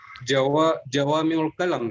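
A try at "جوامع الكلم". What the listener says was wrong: Naam, jawami'ul kalim, bukan kalam ya.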